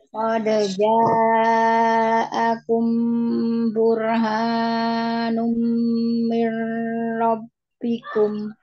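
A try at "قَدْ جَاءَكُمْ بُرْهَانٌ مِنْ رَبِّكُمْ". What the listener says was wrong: Tapi Anda minta ulang sekali lagi di ha, dua harokat saja. Qad ja'akum burhanum mir rabbikum. Burha.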